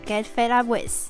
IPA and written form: ɡet fed ʌp wɪð (get fed up with)